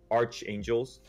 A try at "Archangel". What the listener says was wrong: Arc. Arc. No, Arc. As in like Noah's Ark. Archangel. No, it is Arc. It's not Arch though. It's Arc. It's Arc.